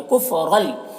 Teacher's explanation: कुफ और गल यहाँ पर रौ को पुर पढ़ेंगे और तनवीन के बाद लाम हुरूफ यरमलून में से यहाँ पर इदगाम ताम होगा, इसे बगैर गुन्ना के साथ में पढ़ेंगे।